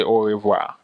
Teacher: It has an R at the end, but in French, we say au revoir. We just don't say the R at the end